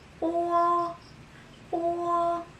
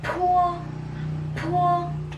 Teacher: So letter B, it sounds like letter P, but it is unaspirated. When we say unaspirated, it means it is voiceless.